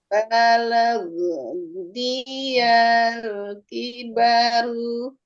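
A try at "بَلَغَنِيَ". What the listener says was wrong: Oke, go-nya berharokat fathah.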